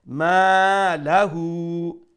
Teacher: will stretch it one alif long due to the alif madda then la is a short sound and then straight after that ha as upside down pesh so · so we'll stretch it one alif long so long short long